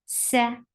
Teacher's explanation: whistle sound should be there in sin